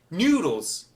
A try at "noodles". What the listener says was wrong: Noodles. You're saying it. It sounds like you're saying it like the word new. N-E-W. Noodles.